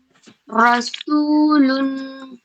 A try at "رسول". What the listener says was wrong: ماشاء اللہ آپ نے را بہت اچھا ساؤنڈ نکالا. رسول ایک دم واضح.